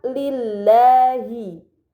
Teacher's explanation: Maka lam pada lafaz Allah dibaca secara tipis